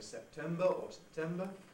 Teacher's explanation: the weak vowel is optional in the unstressed syllable